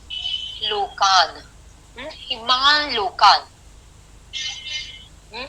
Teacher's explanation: तो यहाँ पे हमने संधि के कारण क्या किया, नकार के स्थान पर अनुस्वार किया, अनुनासिक किया